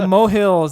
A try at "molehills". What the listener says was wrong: Molehills. There's an L in there. You're saying mohills.